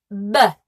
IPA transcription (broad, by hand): b